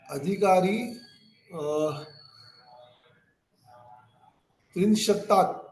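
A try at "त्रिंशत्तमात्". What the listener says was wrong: Trimshat Tamat. You forgot the Tama part. Trimshat Tamat.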